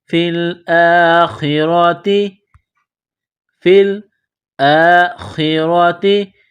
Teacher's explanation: را کے اوپر زبر ہے، را کو موٹا کرنا ہے